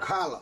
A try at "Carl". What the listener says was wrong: Carl. Not Carla. Just Carl. Carl.